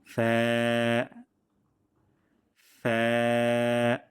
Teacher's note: নিচে ঠোঁটের পেট এবং সামনের উপরের ২ দাঁতের আগা থেকে আমরা উচ্চারণটি করব পাতলা সাউন্ডে। ফ্যা, যেন এমন না হয় ফা, ফয়কার ফা, বাংলা বর্ণমালার মতন এমনটি হবে না।